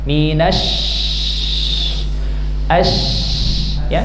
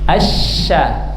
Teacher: Yang benar adalah dengan menaikkan tengah lidah ke langit-langit, karena huruf wastul lisan, tengah lidah. Minasy, ya, ini diangkat ya. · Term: huruf sya